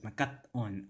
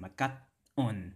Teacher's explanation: it's not necessarily a glottal stop it's a pause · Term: internal pause